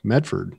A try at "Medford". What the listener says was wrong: Medford. There's no D. It's Medford. You're killing me this whole podcast. It's Medford. Medford. Medford.